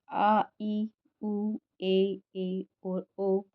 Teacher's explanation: फिर आता है दीर्घ स्वर, आ ई उ ए और ओ। इन स्वरों के उच्चारण में 2 मात्रा काल का प्रयोग किया जाता है, तो हास्य स्वर से ठीक दोगुना समय इन्हें बोलने में हमें लगता है, इन्हें दीर्घ स्वर कहा जाता है।